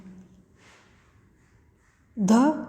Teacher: यह हिंदी की महाप्राण सघोष स्पर्श दंत्य ध्वनि है।